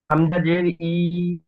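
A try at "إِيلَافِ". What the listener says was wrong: হামজা জের নয়, খাড়া জের জের এখানে একটু দেখেন, জের এই এই নিচে ফার নিচে জের আছে, জেরটি একটু হেলা মতো, আর খাড়া জের সোজা নিচের দিকে, ঠিক এমনটাই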